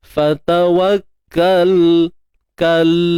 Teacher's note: Matikan lam tanpa memberanakkan bunyi dia. Fatawakkal kal, pegang makhraj lam, jangan lepaskan terlalu awal.